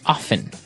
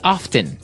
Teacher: They kind of leave out the strong T sound. Well, other people say often.